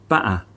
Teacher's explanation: This stops the vocal cords from vibrating, and when the glottis opens again, it creates a quick choking or coughing sound. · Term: glottal stop